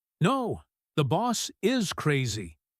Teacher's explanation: He punches the word is. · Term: emphatic auxiliary verb